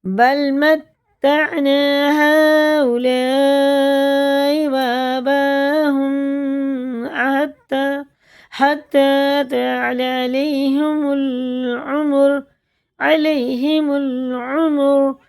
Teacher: یہ تینوں الف 4 الف کے برابر ہمیں کھینچ کے پڑھنے ہیں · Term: مد متصل